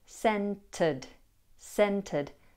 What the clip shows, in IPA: ˈsentəd